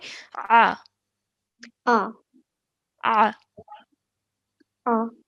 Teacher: Ain is a sound made from the middle of your throat